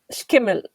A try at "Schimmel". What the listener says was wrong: Well, it's not a K, it's a so it's very difficult to pronounce for everyone. So it's not skimmel, it is schimmel.